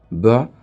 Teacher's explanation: There is vibration, it is voiced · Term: ba sound